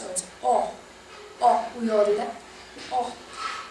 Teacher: the letter O oh it's always open in Spanish